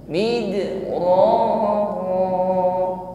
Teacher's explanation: Alaikum, ada hukum idgham mithli atau idgham mimi, mim sukun bertemu mim. Mid huruf dal sukun, jangan ragu-ragu kita tampakkan bunyi qalqalah